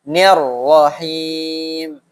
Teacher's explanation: Diidghamkan dan disyidahkan sedikit. Nirrahim. Gitu.